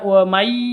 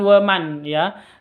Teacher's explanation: Nun mati bertemu dengan ya, masuk ke ya, disertai dengung 2 ketuk.